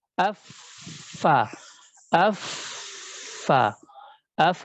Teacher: jazakallah Khair Jadi kalau untuk huruf a huruf a itu adalah pertemuan daripada ujung gigi seri atas dengan bagian perut dalam ya di bibir yang bawah